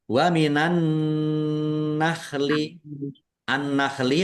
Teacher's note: Waminanakhli annakhli alif syamsiyah karena tidak dibaca langsung masuk ke huruf berikutnya yaitu nun ditandai nunnya ada tasdidnya. Nun tasdid dibaca ghunah atau mendengung ditahan biar tampak mendengungnya.